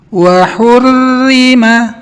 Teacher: Wa hurrima 'alaikum saydul barri ma dumtum hurma. Ro dibaca tarkik, dibaca tipis. Tidak boleh kita baca tebal seperti ini.